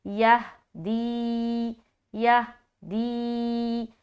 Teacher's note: یہدی، یا ہا زبر یہ، دال یا زیر دی، یہدی، یہدی۔ ہاں میں جب بھی یا کو ملائیں گے قلقلہ نہ ہو، صرف ملانا ہے